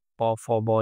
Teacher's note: এরপর হচ্ছে এগুলো কি ঠোঁট এবং ওষ্ঠধ্বনি। প, ফ, ব এগুলাতে ঠোঁটের প্রয়োজন হয়, তাই এগুলোকে ওষ্ঠধ্বনি বলা হয়